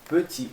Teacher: Petit. Não pronuncia o T.